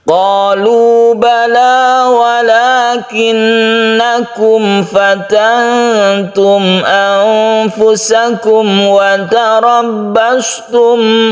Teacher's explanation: Jadi sangat izhar harus jelas dan tidak berdengung, khusus untuk fa dan waw itu untuk izhar syafawinya. Fatantum untuk ikhfa hakiki nun bertemu dengan ta, ini kita dengungkan.